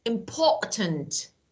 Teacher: when we have strong T okay we don't pronounce it as d okay it's like careful speech